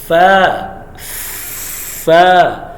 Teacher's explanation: یاد رکھیں جب بھی فا کو پروناؤنس کریں گے تو یہ اوپر والے جو دو دانتوں کا کنارہ ہے یہ نیچے والا جو ہونٹ ہے نا اس کا جو ویٹ پارٹ ہے گلا حصہ اس کے ساتھ ٹچ ہوگا